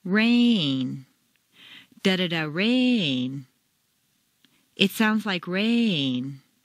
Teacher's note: make rain very Musical and put it on two notes